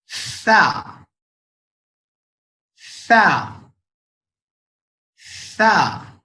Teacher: softly जो है बिल्कुल दांतों को रखेंगे जबान पे, प्रेस नहीं करेंगे, साइड से एयर ब्लो करेंगे